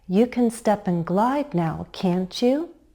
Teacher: Rising intonation makes it a real question. We expect the listener to agree.